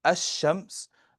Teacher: And in ash-shams, you don't pronounce the lam in those words. But you write it.